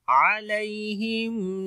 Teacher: علیہم، یا یہاں پر لین ہے نرم پڑھیں گے